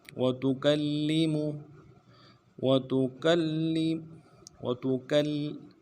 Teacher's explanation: کاف کو آگے لام کے ساتھ ملانا ہے، لام کے اوپر تشدید ہے، زور دیں گے